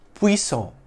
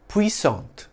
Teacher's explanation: In French, it's pronounced puissant, with a silent T, though its feminine form, spelt with an E at the end, is pronounced with a soft T sound at the end, puissante.